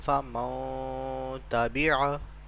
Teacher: ایک سیکنڈ کے لیے ہم نے اپنی جو غنے کی آواز یعنی نون کی آواز ہے اس کو ناک میں لے کے گئے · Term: غنہ